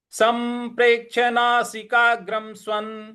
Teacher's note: पर हमको हल्का सा बल लगाना है आघात देना है और जो अनुस्वार है उस पे म का उच्चारण ले आएंगे